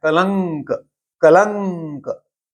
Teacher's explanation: उच्चार उसका जो नाक से निकलती आवाज वह क वर्ग का अनुनासिक है